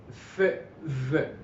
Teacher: I'm using the lower lip being very close to the upper front teeth. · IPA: /f/ and /v/